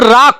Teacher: जब हम रा का उच्चारण करते हैं तो हमारी जीवा में कंपन की स्थिति उत्पन्न हो जाती है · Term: लुंठित व्यंजन